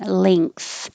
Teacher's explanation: the back of your tongue is going very high